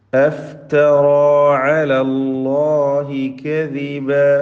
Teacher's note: അഫ്തറ റാഇനും അലിഫിനുമാണ് തഫ്ഖീമുള്ളത്. മറ്റക്ഷരങ്ങൾക്ക് തഫ്ഖീമില്ലാതെ ശ്രദ്ധിക്കേണ്ടതാണ്.